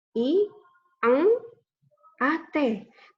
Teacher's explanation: N dan G kita bunyikan secara bersamaan menjadi satu.